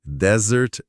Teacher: se eu boto o peso da voz no começo, desert é deserto. Mas se eu jogo a força lá pro final, Isso, desert, com som de Z suave, aí sim é a sobremesa.